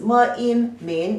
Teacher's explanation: The pronunciation is me in min, the second tone.